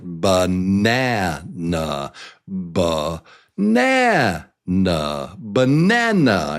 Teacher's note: This is a roller coaster, and the loudest, strongest syllable is the one at the top of the hill. So in this case, it's nah. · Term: strong syllable